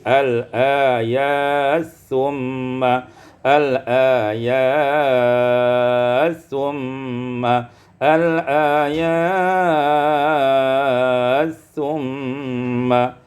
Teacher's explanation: idgham ta' fi sa, diidghamkan ta' pada sa menjadi al-ayat summa al-ayat summa al-ayat summa.